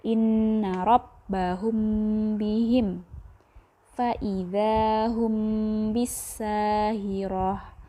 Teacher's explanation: seperti didengungkan karena mim mati bertemu dengan huruf ba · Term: Ikhfa syafawi